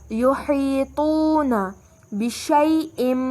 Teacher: یہاں واو پر واو مدی کا قاعدہ ہے، 2 کا مد دیں گے، آواز لمبی ہوگی